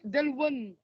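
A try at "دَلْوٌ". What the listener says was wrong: Dalwun, c'est un ou en fait. c'est un ou. C'est un ou, oui. OU, Dalwun.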